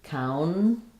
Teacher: You're going to have a syllabic L there